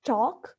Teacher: when you say talk, your tongue goes upward toward the ridge, the alveolar ridge